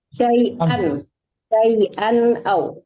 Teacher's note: Jadi nggak ada dengung itu izhar.